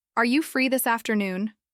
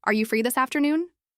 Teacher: But with rising intonation, Are you free this afternoon? The question became friendly, open, flexible. That small lift at the end changed everything. · With a flat tone, it sounded like a statement, almost like a schedule being imposed.